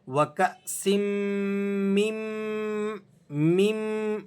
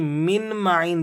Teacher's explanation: میم دوسرے میم کے ساتھ ملا کر آپ نے پڑھنا ہے اور نون کو سائلنٹ کر دیں گے